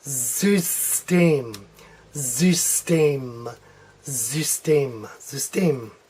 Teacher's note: this Y is going to sound like a U umlaut